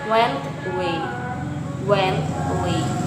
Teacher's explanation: When a word ending in nt links into a word beginning with a vowel sound, the final t is often deleted. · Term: deletion